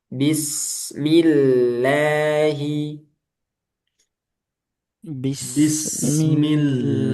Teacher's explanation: lafaz jal Allah di sini tarqik karena sebelumnya harakat kasrah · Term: tarkik